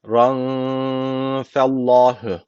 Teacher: Allah lafzı burada kalın okunacak neden kalın okunuyor Çünkü öncesindeki harfin harekesi üstte hatırlayın Allah lafzının kuralı neydi Eğer öncesindeki harfin harekesi üstte isse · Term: Allah lafzı kalın